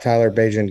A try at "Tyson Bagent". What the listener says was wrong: name's Tyson Bagent, not Tyler.